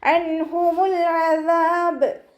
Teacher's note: നൂൻ സാക്കിനയ്ക്ക് ശേഷം ഇവഹാറിൻ്റെ അക്ഷരമായിട്ടുള്ള ഹാ വന്നു. നൂൻ സാക്കിനെ വ്യക്തമാക്കി മണിക്കാതെ ഉച്ചരിക്കുക കേട്ടോ. ലാം കൽക്കല ലെറ്ററില്ലാത്തത് കൊണ്ട് ഹാഫ് സുക്കൂന് കൊടുക്കുക.